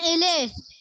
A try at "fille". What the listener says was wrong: Fee. Fee. It's not fillet, it's fee. F-I-L-L-E. Double L is silent. Say tune fee. Say tune fee. Say tune fee. Fee. Just fee. The fee that you pay for your school, it's fee. Say tune fee.